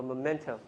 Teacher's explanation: Stress is in the second syllable.